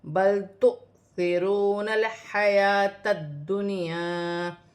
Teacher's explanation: حمزہ پر جزم کی حرکت ہے تو اسے جھٹکے کے ساتھ پڑھا جائے گا